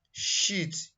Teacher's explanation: This is pronounced from center of the tongue, touches the palate, similar to the English word sheet. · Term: shin